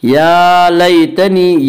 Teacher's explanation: यालीन वो या जो साकिन है उससे पहले ज़बर यालीन को नरम आवाज़ के साथ पढ़ेंगे